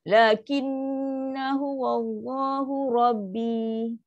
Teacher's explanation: Nun sabdu panjang saja tanpa memanjangkan alif ni. Sebab alif ni tak ada apa-apa pun kalau sambung. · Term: dengung